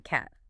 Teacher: It needs a big jaw drop. I mean, your mouth has to stretch wide. It's a very forward ah sound. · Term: short A